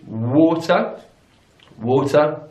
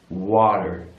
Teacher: notice the vowel sounds there in British English is war war and in American English it's wah-wah